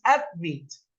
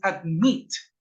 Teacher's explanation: Es decir, que la última sílaba tiene acento.